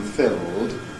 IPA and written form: fɪld (filled)